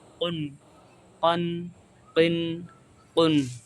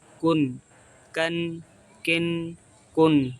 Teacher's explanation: قاف یہ جڑ زبان اور حلق کی تالو کی نرم حصے سے ادا ہوتا ہے، اور کاف جو ہوتا ہے جڑ زبان تالو کے سخت حصے سے ادا ہوتا ہے